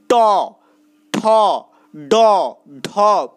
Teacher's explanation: যে সকল ধ্বনি উচ্চারণ করার সময় জিহ্বা মূর্ধা স্পর্শ করে তাকে মূর্ধন্য ধ্বনি বলে · ট, ঠ, ড, ঢ উচ্চারণ করার সময় জিভের উপরিভাগে মুখের যে অংশটাতে জিভ স্পর্শ করছে সেটাই হচ্ছে কিন্তু মূর্ধা। তো এই ধরনের ধ্বনিগুলোকেই বলা হয় মূর্ধন্য ধ্বনি।